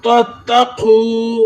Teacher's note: قاف قلقلہ ہے، موٹا پڑھیں گے